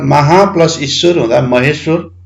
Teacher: आकार र इकार दीर्घ इकार मिल्दा एकार उच्चारण हुँदो रहेछ ए बन्धु रहेछ ए स्वर निर्मित हुने रहेछ महा प्लस ईश्वर हुँदा महेश्वर।